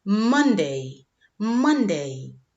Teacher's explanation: Como ves, ponemos estrés en la primera palabra.